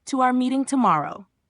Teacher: Pitch goes down again at the end, final part of the sentence. You'll stress meeting tomorrow.